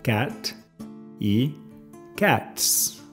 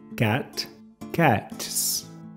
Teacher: al final del t pausa por un fracción de un segundo y recomienza con s el sonido producido es parecido a la z de Pizza